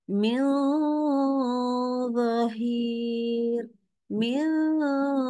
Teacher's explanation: dengungnya pasti akan terasa tebal Kenapa karena pangkal lidah kita naik